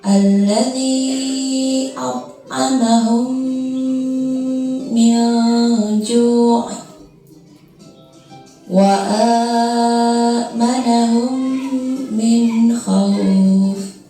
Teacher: memasukkan huruf mim ke dalam huruf mim disertai dengan suara gunnah sekitar 2 ketukan atau harokat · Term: idgham misli